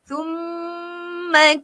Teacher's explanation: Mim ada syaddah. Okay, dengungkan. Jangan tinggalkan dia.